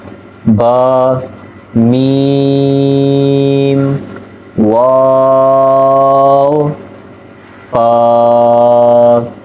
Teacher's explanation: یہ 4 حروف ہیں کہ جن میں جو ہونٹوں سے ادا ہوتے ہیں، با ہونٹوں کو ملانے سے ادا ہوتا ہے، ہونٹوں کی خشکی والی حصے سے، اور میم ہونٹوں کی تری والی حصے سے ادا ہوتا ہے، اور واو دونوں ہونٹوں کو گول کرنے سے، اور فا جب اوپر کے دانت نیچے والے ہونٹوں سے لگیں اس سے فا ادا ہوتا ہے۔